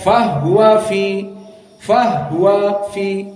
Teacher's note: Dan yang kedua dibaca dalam keadaan sukunul ha pada dhamir fahuwa. Maka dibaca fahuwa fi, fahuwa fi, dan ini sesuai dengan qiraah Al-Kisai dan As-Susi an Abi Amr.